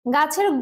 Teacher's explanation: চ, ছ এগুলো কিন্তু তালব্য ব্যঞ্জন। তো গাছের গটা কণ্ঠ ব্যঞ্জন এবং ছটা হচ্ছে তালব্য ব্যঞ্জন।